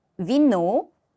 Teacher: 윗니와 아랫입술을 붙였다 강하게 한 번에 떼면서 나오는 소리만 나는 공기가 없는 그런 유성음 자음입니다.